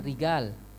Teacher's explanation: dia nggak bisa ngucapin ja, ngucapinnya ga. Rijal, dia nggak bilang rijal, rigal.